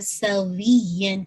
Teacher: یہاں پہ نبر کا رول آ رہا ہے سوین, یہاں پہ آپ کی آواز تھوڑی سی ایلیویٹ ہوگی